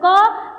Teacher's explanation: क जब उच्चारण करोगे तो कंपन उत्पन्न नहीं होती है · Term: अघोष वर्ण